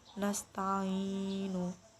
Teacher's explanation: Mad arid disukun adalah mad bertemu huruf sukun karena waqaf, panjangnya 2, 4 atau 6 harakat. Contohnya nasta'inu.